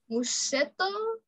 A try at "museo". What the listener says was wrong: To? Why you say to? I don't see any T there. Museo.